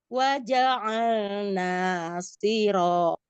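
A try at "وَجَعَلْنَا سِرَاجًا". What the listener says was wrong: Siro. Lebih turun Bu.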